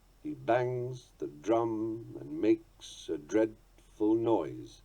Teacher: The line has a rising rhythm, that's the point, from weak to strong, terminating in its 5th stressed beat.